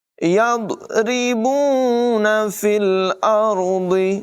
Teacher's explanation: را کو پر پڑھیں گے، ضاد کی آواز بھی پر ہوگی